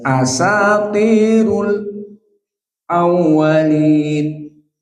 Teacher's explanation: As-sakt is stop before Hamzah. So the stop here, how much harokat? Only 2 harokat.